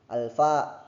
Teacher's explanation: kalau fa itu dia itu di antara bibir dan gigi. Geseran ikhfa Jadi dia tuh ikhfa hukumnya ya.